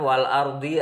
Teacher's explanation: ada alif lam qamariyah karena ada alif lam bertemu dengan hamzah, dibaca jelas.